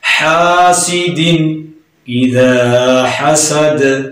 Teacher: حا کو درمیان والے حلق سے پڑھا جاتا ہے